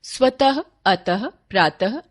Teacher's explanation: विसर्ग का उच्चारण अघोष ह व्यंजन के समान होता है